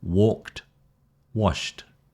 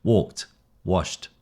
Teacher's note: So the T is after voiceless sounds.